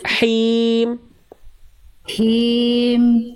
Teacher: Rasakan dari tengah tenggorokan, rasakan dikeluarkan dulu bisikannya.